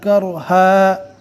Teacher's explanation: رو ساکن کو پور پڑھیں گے اس لیے کہ رو ساکن سے پہلے زبر ہے